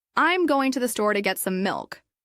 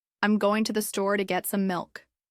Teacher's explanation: Notice how to becomes tu or disappears completely. The stressed words are going, store, get, milk. Everything else becomes soft and fast.